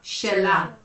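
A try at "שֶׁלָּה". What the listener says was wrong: Great.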